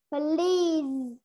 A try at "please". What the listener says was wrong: Good. Please. Mạnh hơn xíu nữa nào.